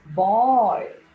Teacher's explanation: b is a voice sound, and while we open our mouth in order to make the sound b, very less air is released. · in order to make the sounds b and p, both the lips are brought together and then we release the sound on air.